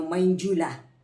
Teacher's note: ચ વર્ગનો અનુનાસિક ય છે એટલે એનો ઉચ્ચાર કરવાનો મંજુલા.